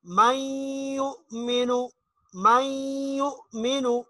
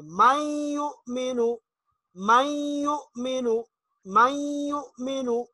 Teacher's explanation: ہم اس نون کو بیچ میں نہیں پڑھیں گے، میم کو یا کے ساتھ ملا دیں گے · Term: ادغام